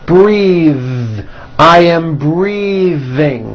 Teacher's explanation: I am breathing with a voiced TH.